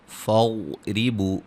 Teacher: ضاد کو موٹا ادا کریں گے